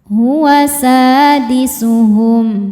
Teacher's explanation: Karena ada alif didahului fathah maka sinnya panjang dua harakat. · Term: mad thobi'i zohiri